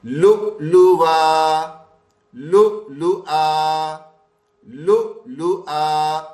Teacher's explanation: یہ واو زائد ہے، واو کی آواز نہیں نکلے گی